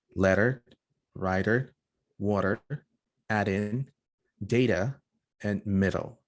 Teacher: When T and D are preceded by a stressed vowel and followed by another vowel, they're flapped. You can also think of this sound as a fast D, or what I call it in Spanish, an ere. · The flap is a voice sound, a characteristic feature of American and Canadian English. For example, you have words like letter, writer, water, add in, data, and middle. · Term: flap T and D